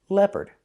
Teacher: And the second syllable is the sound, like in burger, closed, Together, leopard. Put the stress on the first syllable.